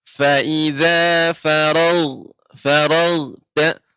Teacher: untuk huruf ghain jangan sampai dia farag ya, akan tapi seperti tertahan. Fa idza faragta naik dia karena gha ini bagian tenggorokan bagian atas ya.